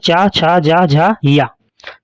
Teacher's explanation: दूसरा नंबर है स्पर्श संघर्षी। इनके उच्चारण में उच्चारण अवयव सहसा खुलने के बजाय धीरे-धीरे खुलते हैं।